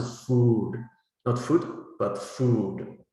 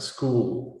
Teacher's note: it's not so much the quality that's important, but the length of the vowel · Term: long u